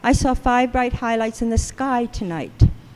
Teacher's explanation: And so now I have marked, so the largest jaw opening will be the nuclear stress, NS, and then there's 2 phrases here, 5 bright highlights. The largest jaw opening in that phrase is on high, that's the phrasal stress, and the foot stress is on 5.